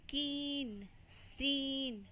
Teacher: जब आप बोलोगे कीन, सीन, तो आपके जो दोनों लिप्स हैं वो स्प्रेड हो जाएंगे, एक दूसरे से दूर चले जाएंगे।